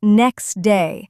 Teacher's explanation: the phrase next day is often pronounced as next day where the t sound disappears. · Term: elision